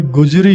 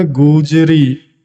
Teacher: ਦੁਲੈਂਕੜ ਦੀ ਜਿਹੜੀ ਆਵਾਜ਼ ਹੈ ਵੱਡੇ ਊ ਦੀ ਆਵਾਜ਼ ਹੁੰਦੀ ਹੈ, ਛੋਟੇ ਊ ਦੀ ਆਵਾਜ਼ ਨਹੀਂ ਹੁੰਦੀ।